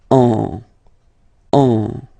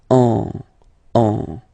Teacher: you will get what we call a nasal, so it goes in your nose, and then you get the sound on.